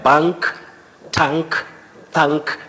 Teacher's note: that letter A takes the front low vowel sound a that is in British English